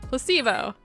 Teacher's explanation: the stress is on the middle syllable